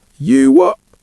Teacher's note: many Brits will use the glottal stop at the end instead of a T.